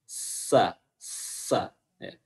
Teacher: Insa, insa. Posisi atau makhraj huruf sin adalah ujung lidah ketemu dengan gigi bagian atas.